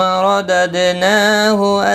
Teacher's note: دال ساکن پر قلقلہ ہوگا، نا کے اوپر کھڑی زبر ہے، 1 الف کی مقدار کے برابر کھینچ کر پڑھیں گے